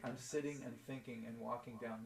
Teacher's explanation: just for this album i just stopped cutting off my g's